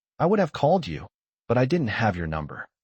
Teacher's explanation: The weak forms like would have and but just disappear.